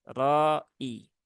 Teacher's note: huruf ro ini rnya dibaca tebal ya dibaca tebal dan panjangnya 4empat atau 5 harakat ya mad wajib muttasil ya empat atau Li harakat tapi yang